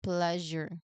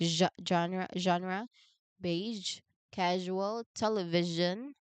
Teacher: No, a common mistake is to try to use the j as in judge sound instead, but j is a fricative. It must be a continuous flowing sound, not a sudden stopped one. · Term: voiced zh sound